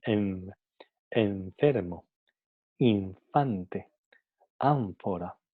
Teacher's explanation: vamos a notar que en el momento de pronunciar n, la pronunciamos labiodental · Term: n labiodental